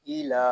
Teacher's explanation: حمزہ زیر ای، لام کھڑا زبر لا، ایلا، یہاں لام کو ایک الف تک کھینچ کر پڑھیں گے کیونکہ یہاں کھڑا زبر ہے